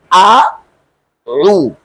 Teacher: এই দেখেন আউ এখানে দুটি হরফ একটা হামজা আরেকটা আইন এবং দুইটি হরফের মাখরাজ দুই জায়গায় একটা হচ্ছে হলকের শুরু থেকে আরেকটা হচ্ছে হলকের মধ্যখান থেকে